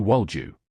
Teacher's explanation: when a d sound meets a y sound, they merge into a j sound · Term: Assimilation